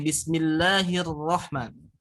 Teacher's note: Takrir itu getaran tetapi berada di ujung lidah atau di ujung lisan. Di sini. Jadi getarannya di sini.